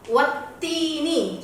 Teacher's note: Nggak ada tak yang disukunkan atau dimatikan. Wattini, jadi ada dua taknya, tak mati dan tak kasroh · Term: tasdid